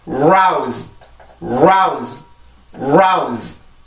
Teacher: R 발음이 음절의 시작일 경우는 입술이 나와야 되죠.